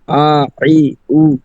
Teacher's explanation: 2 নম্বর মাখরাজ হলকের মধ্যখান হইতে আইন হা